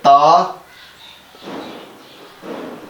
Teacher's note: जुबान की नोक और ऊपर वाले दांतों की जो जड़ है वहां जाके जब हम टच करेंगे तो वो हमारा ता अदा होगा।